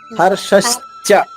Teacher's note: నాలికతో పైన అంగిలిలో మూసేయండి, మూసేస్తే చ వస్తుంది